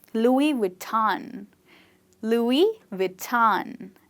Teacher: make sure when you say the V, you bite your lip and you don't say W, but you say V.